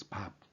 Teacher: Well, at the end of the word, I mean the Romanized word, you can see P. So this ba sounds like P sometimes, especially when it comes at the end of the word